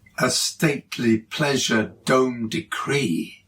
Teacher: once again creating a powerful iambic tetrameter · A stately pleasure dome decree. The alliterative d sound punctuates the final iamb, picking up on the second iamb of the first line, and we've got little echoes going on with Kubla and pleasure and stately and decree.